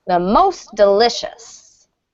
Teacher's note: So the stress in delicious is still on the second, but there is strong stress on the most there. · when it's most, then the stress falls on most, or most is a little more stressed.